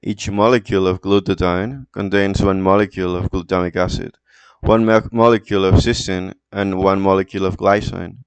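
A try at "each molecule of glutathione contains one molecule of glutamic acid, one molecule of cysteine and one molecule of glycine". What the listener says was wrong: then the last quarter is accelerated and then like your spaces in between words that just disappeared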